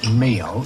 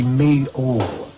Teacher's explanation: you have an L on the end of the word to attach a kind of ooh sound so that you don't say meal, you say me-all and make it meal, or you say feel and wheel.